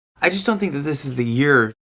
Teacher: let's look at our stress we definitely have year at the end